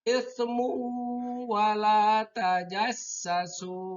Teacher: Tanwinnya dimasukkan ke waw, jadi membacanya yaitu ismu wala tajassasu, tidak ismun tapi ismu wala tajassasu. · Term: idgham biguna